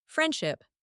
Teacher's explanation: friendship, the D sound is dropped. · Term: elision or sound dropping